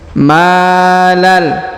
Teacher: huruf Ma dipanjangkan dua harakat karena di depannya terdapat Alif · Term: 2 harokat